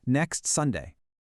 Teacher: The word next ends with three consonants, kst, and Sunday kicks off with s. When you say them together naturally, they link up and create a four-consonant chain, ksts. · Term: 4-consonant chain